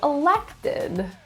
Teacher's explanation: stress is in the second syllable